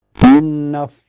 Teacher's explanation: Dan fa mempunyai sifat hames. Dan makhraj fa itu bibir bawah kena gigi seri atas.